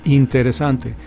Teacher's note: Okay, the next recommendation I'm going to give you is every time you have two vowels together, especially you're going to exaggerate the E. Now in Spanish it's a very relaxed E